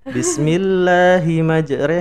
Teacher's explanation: tulisan di Quran itu majroha tapi kita bacanya harus majreha